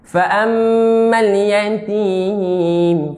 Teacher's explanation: Mim dengan nun bersabdu kena dengung.